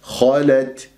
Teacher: الخاء مفخمة مرتبة ثانية مفتوحة، اللام مرققة، التاء مهموسة في الوقف والوصل